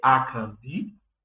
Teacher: Ali nós temos dois tons baixos e um alto, que vai indicar a maneira correta de pronunciar o meu nome. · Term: Tom baixo e tom alto